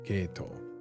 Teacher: That sounds like a tamadaka, right? Geito comes down. Starts high, goes down, right?